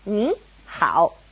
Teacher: So just remember, if it's a third tone and a third tone next to each other, ni, hao, it changes to a second tone and a third tone